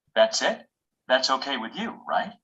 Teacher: we can add a word like right with rising intonation to ask a question.